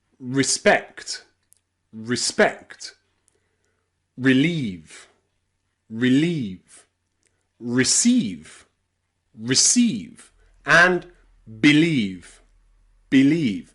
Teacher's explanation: You'll see that letter E at the beginning again is unstressed. So we pronounce it I